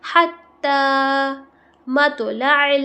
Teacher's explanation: تو پہ قلقلہ ہوگا کیونکہ تو قلقلہ لیٹرز میں سے ہے · عین کی آواز حلق سے نکالیں گے